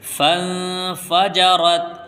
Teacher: فَقُلْنَا اضْرِبْ بِعَصَاكَ الْحَجَرَ فَانفَجَرَتْ مِنْهُ اثْنَتَا عَشْرَةَ عَيْنًا، یہاں پر اخفا ہوگا کیونکہ نون ساکن کے بعد اخفا کے 15 حروف میں سے فا آیا ہے، اس لیے یہاں پر ہم اخفا کریں گے یعنی ناک میں آواز لے جا کر کے پڑھیں گے